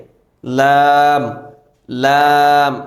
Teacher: লাম দাঁতের সঙ্গে লাগবে না কিন্তু মাড়ির সঙ্গে লাগবে · জিহ্বার আগা সামনের উপরের দুই দাঁতের মাড়ির সঙ্গে লাগিয়ে বা উপরের দাঁতের মাড়ির সঙ্গে লাগিয়ে লাম লাম তাহলে সাত নাম্বারের